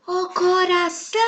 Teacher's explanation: a sílaba são é a sílaba tônica da palavra, pois ela foi pronunciada de maneira mais forte